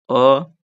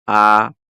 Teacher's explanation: आ time लग रहा है। अ पढ़ते खत्म कर दिए लेकिन आ पढ़ने में टाइम लग रहा है